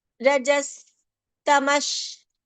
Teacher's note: Here, please observe, the first sa is dental, the second tamash sha is palatal